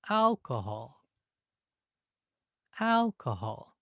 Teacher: notice how that first syllable al that has a length to it it's not the shortness of hot or short alcohol hall both